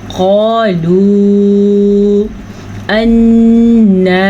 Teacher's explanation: جو مد نظر آ رہی ہے اس کو کھینچ کے پڑھیں، 2 سے 2.5 سیکنڈ تک کھینچ کے پڑھیں، یعنی کہ قالوا انا، اب نون کے اوپر شد بھی ہے اور نون کے اوپر کھڑی زبر بھی ہے، غنہ بھی کریں گے اور کھڑی زبر کو کھینچ کے بھی پڑھیں گے۔